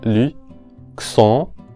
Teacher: Tenemos aquí a la vocal nasal on, que es como una O del español, considerablemente más abierta y obviamente nasalizada.